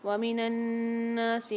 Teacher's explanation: وَمِنَ النَّاسِ میں نون میں غنہ کر کے پڑھیں گے اور کھینچ کے بھی پڑھیں گے